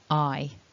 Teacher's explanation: So that first syllable then, it's a double vowel, I. So what you need is some movement in the shape of your mouth in order to pronounce this correctly. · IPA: /aɪ/